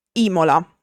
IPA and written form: ˈimola (Imola)